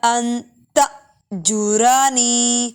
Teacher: حمزہ ساکن جھٹکا دے کے پڑھیں گے